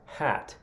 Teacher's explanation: that sort of rounded O sound that we have is flattened in the Northwest, or the Midwest up to the north